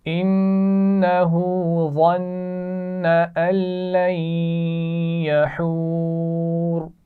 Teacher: ظن وا موٹی پڑھی جائے گی اور ظن کے نون پر بھی غنہ ہے. لن یحور پہلے نون پر غنہ نہیں ہے کیونکہ نون ساکن کے بعد لام آ گیا ہے، تو یہاں ملا کر تو پڑھیں گے لام سے لیکن غنہ نہیں کیا جائے گا.